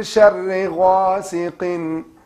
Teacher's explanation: you hide that noon because it's ikhfa, because it's followed by sheen